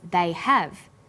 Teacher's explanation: Because stressed the auxiliary verb have, the H sound is pronounced.